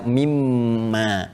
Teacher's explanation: Kalau kita sambungkan min dengan ma, karena ada hukum idgham di sini, ya idgham bi gunnah, maka kita baca mimma. Asalnya min dengan ma.